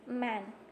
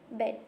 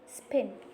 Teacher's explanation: the soft palate is raised in the production of B and P sounds, and M is nasal. And the word bilabial means it refers to the 2 lips involved.